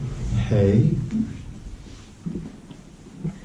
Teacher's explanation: c'est du souffle, elle est expirée. Oui, expirée. Et non pas inspirée.